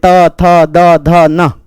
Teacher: ये सब दांत से, इसमें जीभ दांतों को छू रही है,